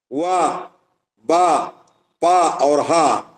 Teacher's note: वा, बा, पा और हा ये ओष्ठ स्थान वाले हैं।